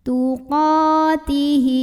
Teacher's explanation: Hi mad silah qasirah karena ada hak domir yang diapit 2 huruf hidup, yaitu huruf ta dan huruf waw. Dan huruf setelahnya adalah bukan hamzah, bukan a, bukan i, bukan u.